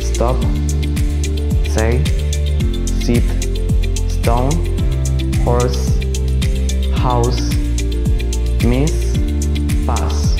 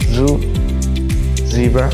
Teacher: The Z is usually pronounced Z. The S sound make a hiss and the Z produces a vibration and is voiced.